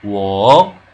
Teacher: Wo, the one that goes down and up.